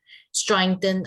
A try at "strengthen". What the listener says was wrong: Careful with your pronunciation of strengthen, by the way. You're adding like an A sound to it. Just strengthen.